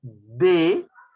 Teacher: hacia la cara interna de los incisivos superiores pero adentro entonces el ápice o la punta de la lengua va hacia la zona dental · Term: dentales